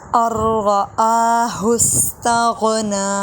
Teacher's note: نون نہیں پڑھیں گے، ار پڑھیں گے